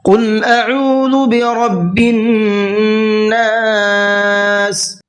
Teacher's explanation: قل قاف کو پر کر کے پڑھنا ہے